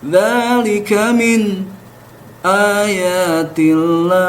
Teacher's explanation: Nah, pada kaidah riwayat Imam Khalaf dari Imam Hamzah, ketika sukun menghadapi hamzah, ya, itu ada saktah biasanya, sehingga dibacanya seperti ini, dzalika min ayatillah, dengan saktah, yaitu berhenti sejenak sepanjang 2 harokat tanpa bernapas dan berniat akan melanjutkan bacaan